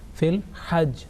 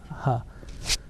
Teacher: ha from the middle of throat. It's a sharp cutting sound. Okay, as compared to the blunt sound of ha, like a ha.